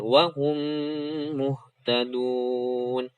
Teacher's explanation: Idgham mimi ditahan 2 harokat, dimasukkan, diidghamkan, ditasydidkan.